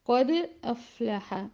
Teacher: اگر افلح کے ساتھ ملا کے پڑھا جائے تو وہ دال کا قلقلہ صغریٰ ہوگا